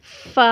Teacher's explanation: ऊपर के 2 दांतों के किनारे को नीचे के होंठ के तर हिस्से से जब हम मिलाते हैं तो फा अदा होता है